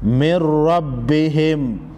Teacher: نون ساکن کے بعد حروف یرملون میں سے یہ را ہے تو یہاں پر ادغام ہوگا، مر، من کی جگہ مر پڑھیں گے